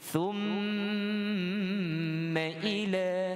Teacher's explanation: Jadi mim ada tasydid, ada sabdu tu, wajib dengung.